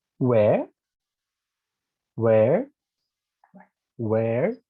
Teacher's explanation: you start high and you go low